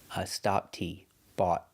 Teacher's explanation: We stop the air, bought, with our tongue up.